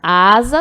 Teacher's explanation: asa tem som de z mas não se escreve com z a gente usa um s apenas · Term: som do Z